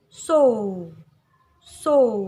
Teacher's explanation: Monyong dan bulat. O. Seperti dalam kata so. Dia panjang dan kuat. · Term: monyong bulat